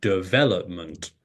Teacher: the stress syllable comes on the second syllable and you say development